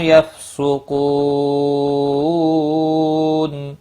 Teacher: یفسقو کو واو مدہ ہے، ایک الف کے برابر کھینچ کر پڑھیں گے، اور وقف کی صورت میں نون ساکن پڑھا جائے گا۔ وقف بالاسکان ہوگا، 3 سے 5 الف کے برابر کھینچ کر وقف کریں گے۔